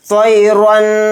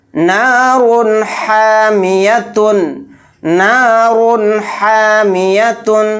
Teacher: را 2 پیش رن کو کہتے ہوئے جلدی پڑھیں گے بلا غنہ کے، یہاں پر غنہ نہیں کرنا ہے۔ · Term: اظہار حلقی